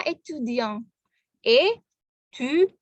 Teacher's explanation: Ingat konsonan terakhir tidak berbunyi. Jadi bunyinya ada di bunyi sengau dari formasi A dan N.